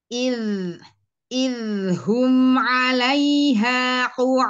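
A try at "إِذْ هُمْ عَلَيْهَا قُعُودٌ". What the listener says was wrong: Ini jangan masuk hidung. 'Alaiha 'alaiha idhum 'alaiha qu'ud.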